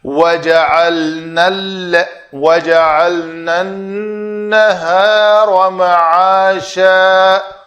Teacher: نون زبر الف نا کے الف مدہ کو میں نے حذف کر دیا، نہیں پڑھا۔